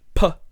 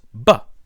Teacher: my mouth is doing the same thing the difference is all in my vocal chords